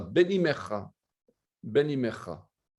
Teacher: On prononcera alors l'expression Ben Imecha comme un seul et même mot